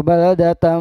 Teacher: Tanwin bertemu dengan huruf mim, ini bacaan idgham biguna. Jadi n-nya diganti menjadi m atau dilebur dimasukkan bunyi m.